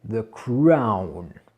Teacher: Donc il y a deux sons. Il y a d'abord le A, cra, et ensuite, avec le W qu'il y a derrière le O, eh ben, on finira un petit peu en arrondi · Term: diphtongue